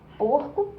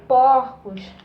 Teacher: tava fechado no singular é aberto no plural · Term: plural metafonico